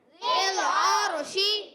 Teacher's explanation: شین زبان کے درمیان اور تالو کے درمیان سے ادا ہوتا ہے